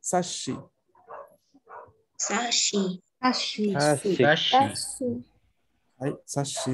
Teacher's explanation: Sashi tiene aquí lo que en japonés se conoce como doble S, pero en realidad no es el duplicar la S, sino es duplicar el sonido sh de la sílaba shi